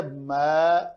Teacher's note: میم پتلا ہے تو پتلے حرف کے بعد الف پتلا پڑھ